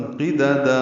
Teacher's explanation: پہلی دال کو جلدی پڑھنا ہے، دوسری دال کو وقفاً 2 حرکات لمبا کرنا ہے، مد عوض ہوگی، مد اصلی یعنی مد اصلی کی قسموں سے مد اصلی کی قسموں میں سے مد عوض بنے گی، 2 حرکات لمبا کریں گے، وقفاً قددا۔